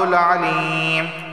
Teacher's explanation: یا سے پہلے زیر ہے، اسے ایک الف کے برابر کھینچ کر پڑھا جائے گا